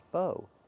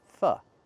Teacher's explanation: We use the short uh sound like cup and up, not the long o like no and go.